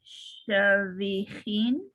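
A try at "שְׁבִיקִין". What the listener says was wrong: That's a kuf. Chevy keen. Look at the vowel under the tet.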